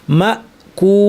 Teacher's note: ঠোঁট গোল হয়ে পেশের আকৃতিতে চলে আসছে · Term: মাদ্দের ওয়াও